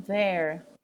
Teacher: É aquele treino daquele som que a gente não tem, na verdade. A gente tem os dois THs, que um é o thank you, e esse que é o there, que dá aquela tremida